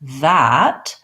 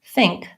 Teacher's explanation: when I say that, my voice is on for that TH. When I say think, my voice is not on for that TH.